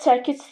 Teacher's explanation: Çəkicdə çəkiç tələffüz olunur və vurğu ikinci hecəyə düşür.